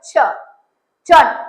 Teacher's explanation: இந்த ch சொல்லும்போது நம்ம vocal cord வைப்ரேட் ஆகாது. vocal cord எந்த சவுண்ட்ஸ்க்கெல்லாம் வைப்ரேட் ஆகலையோ அதெல்லாம் வந்து நம்ம voiceless அப்படினு சொல்லுவோம்.